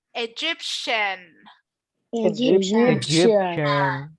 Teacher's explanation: this T, I am not going to pronounce it like T. Instead, I'm going to pronounce it like sh